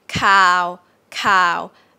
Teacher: k here i would explain it as aspirated k for now and then i'll get into it later about if